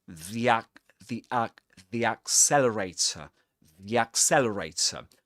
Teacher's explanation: This is pronounced with an e sound because the next word begins with a vowel sound.